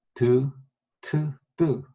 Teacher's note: 그러니까 잇몸과 이가 딱 그 마주치는 그 부분, 혀 끝이 윗잇몸에 살짝 닿았다 떨어지면서 나는 소리들이에요. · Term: 덴털